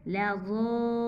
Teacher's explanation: लाम ज़बर ला, ज़ाद ज़बर अलिफ मद लाम ज़ाल, लज़ाल, लाम पेश वाउलू, नून ज़बर ना लज़ालून। यहाँ पे भी वाव मद्दा है, इसलिए हम इसको 2 अलिफ के बराबर खींचेंगे।